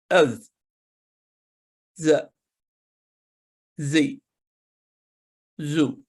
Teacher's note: دوسرا حرف ہے ذا. زبان کی نوک کو سامنے کے نچلے والے دانتوں کے کناروں سے لگنے سے یہ حرف ادا ہوتا ہے اور ہلکی سیٹی کی سی آواز پیدا کرتا ہے